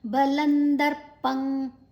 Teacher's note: ಲಾ ಆದ ನಂತರ ಅನುಸ್ವರದ ಉಚ್ಚಾರಣೆ ನ, ಮುಂದಿನ ಅಕ್ಷರ ದ ಇದೆ.